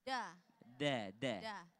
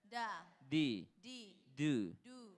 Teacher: Nah, jadi kalau dalnya Arabiyah atau huruf Arab, da, makharajul huruf, da itu bukan da, tapi da di belakang gigi atas